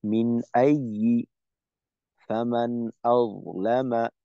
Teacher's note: নুন সাকিন তানবিনের পর হামজা, এটা হলো ইজহারের হরফ, গুন্না ছাড়া স্পষ্ট করে পড়তে হবে